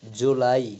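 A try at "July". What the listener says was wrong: একটু লম্বা হবে আমরা জুলাই, এই জুলাইটা হয় কিন্তু ব্রিটিশরা যেভাবে বলে আমরা যদি ওই উচ্চারণ আনতে চাই তখন আমরা একটু একটু লম্বা করে ফেলবো।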